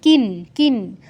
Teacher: কিন্ন, কিন্ন অনুসার পর ত বর্গের অক্ষর আছে, তাই অনুসারের জায়গায় নয় হসন্ত উচ্চারণ করতে হবে